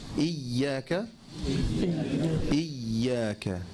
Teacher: الياء تخرج من وسط اللسان مع ما يحاذيه من الحنك الأعلى